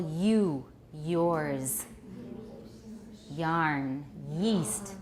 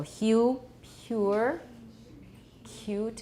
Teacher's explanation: when approximants are voiceless we hear friction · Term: voiceless palatal fricative